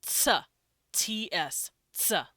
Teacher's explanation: these are affricates these are two letters made in one sound